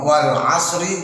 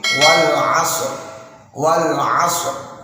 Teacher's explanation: setelah huruf shad langsung ro-nya tebal